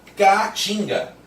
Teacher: não tem como juntar esses dois As na mesma sílaba, porque aí fica K-A, K-A, eu tenho que dar uma pausa para continuar falando. Não tem como falar tudo junto, K-A, K-A. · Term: hiato